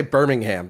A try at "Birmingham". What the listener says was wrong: It's because you put the H in it. Birmingham. Birmingham.